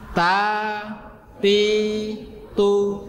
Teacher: jadi ujungnya tempelkan gusinya, bukan tempelkan gigi